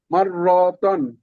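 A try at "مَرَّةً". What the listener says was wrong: র একটু টান হয়, টান হবে না এটা।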